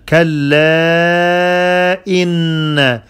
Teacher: You prolong the alif 4 seconds for harakat. In, the noon has shadda. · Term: mad